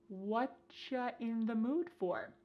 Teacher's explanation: Here the word you has been reduced to cha. Cha. This is extremely common in spoken English that the word you gets changed up in a lot of ways.